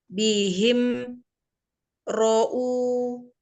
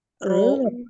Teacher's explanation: ada ro dibaca tebal karena fathah